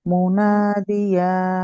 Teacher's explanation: ইয়ার মাত্রা লাস্টে একটা হায়ের মতো সাউন্ড আসছে, এটা আসবে না